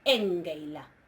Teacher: La sigma, en este caso, ante la lambda, que es una líquida, ante la lambda, no se va a mantener, va a caer y va a producir el alargamiento compensatorio de la vocal anterior.